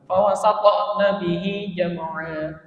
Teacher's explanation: Ujung lidahnya itu mengenai pangkal gigi seri bagian atas terus dipantulkan.